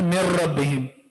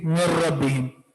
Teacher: सही पढ़ लिया, नाक में आवाज नहीं है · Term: इदगाम बिला गुन्ना